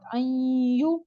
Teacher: نون ساکن اور بعد میں یا ہو تو غنہ کے ساتھ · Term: ادغام مع غنہ